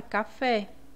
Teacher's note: aqui o fé é a sílaba mais forte né então é uma oxítona Beleza então voltando aqui para questão